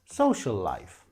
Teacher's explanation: with a boo and life also begins with an l sound so we say social life with one l